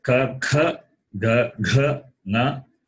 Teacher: The place of pronunciation is throat, therefore, they are gutturals.